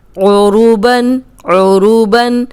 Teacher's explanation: عین کی آواز آنی چاہیے حلق سے